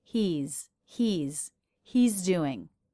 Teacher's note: We also heard he's, where the apostrophe S is a Z sound.